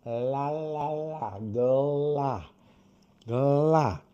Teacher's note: Esse L onde a língua toca lá em cima e fecha o ar, fecha para o ar não poder entrar diretamente, eu chamo de L fechado.